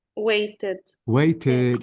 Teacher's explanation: is the simple past of wait waited waited exactly so notice I pronounce the E plus the D why because the verb ends with t